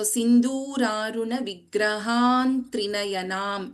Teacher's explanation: The first letter after this Anuswara is Ta. So, the fifth letter of the Tavarga replaces this Anuswara.